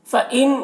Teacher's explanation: نون میں اخفا ہوگا، نون کی آواز کو ناک میں چھپا کر پڑھیں گے